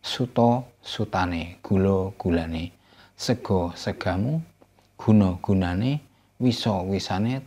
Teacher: those endings, when attached to final open syllable with O sound, they change that O sound into A